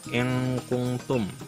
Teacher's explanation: itu juga ikhfa karena nun bertemu dengan kaf dibaca dengan samar